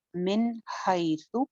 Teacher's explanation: नून साकिन के बाद आगे हा आ रही है हरूफ हल्की में से, तो यहाँ पे गुन्ना नहीं होगा · हाई कौन सी या है? या लीन, गई के वजन पे हाई, हाइसु, ता सिंगल हरकत रखनी है, इसको लंबा नहीं करना।